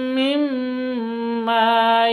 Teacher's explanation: Jadi mim tasydid berdiri sendiri maka dibaca gunnah. Dengung 2 ketuk.